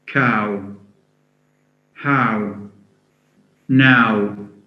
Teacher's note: Then we have this diphthong. A sound followed by U. Cow, how, now. A diphthong consisting of two vowels.